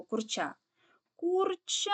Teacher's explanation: падає наголос на кінцеву А тобто другий склад